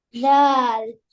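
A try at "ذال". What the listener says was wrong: ஆ, நீங்க தால்ன்னு சொல்ல போக்குள்ள உங்களோட நாக்கு மேல் பல்ல பேத்து பட்டுது உள்ளுக்குள்ள. தேல். நாக்கு நாக்கு பல்லுக்குள்ள, பல்லுக்கு உள்ளதான் வைக்கணும், பல்லுக்கு வெளியே கொண்டு வரக்கூடாது. பல்லுக்கு பின்னாடி உள்ளுக்கு வைங்க. தேல். இந்த லெட்டரை செல்ல போக்குள்ள நல்லா பார்த்துக்கொள்ளணும் நாக்கு மேல் பல்லுல பட இயலாது, படப்படாது. தேல்.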